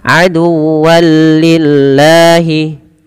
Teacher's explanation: maka masukkan tanwinnya kepada huruf lam, karena di sini ada bacaan idgham bila gunnah, tapi tidak disertai dengan penahanan pada lafal lam.